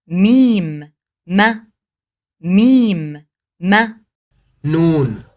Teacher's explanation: اس کی ادائیگی ہونٹوں کے اندرونی خشک حصے کو آپس میں مکمل طور پر ملاتے ہوئے، جیسا کہ اس تصویر میں ظاہر ہے، کی جاتی ہے۔